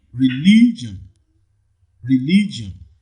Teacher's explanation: in religion the second syllable the second syllable receives the primary stress